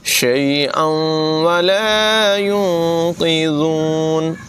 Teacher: شیئا ولا ينقذون، یہاں پر اخفا ہے، غنہ کریں گے اور ذال کی آواز بغیر سیٹی کے ادا کریں گے